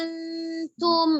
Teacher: Jadi kayak ada gerakan lidahnya itu dia mengalir, nggak langsung nempel, gitu kan? Dia ngambang dulu, baru dia pas mau bilang tum, baru dia meletakkan pada makhraj ta, ujung lidah ada di pangkal gigi seri. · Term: samar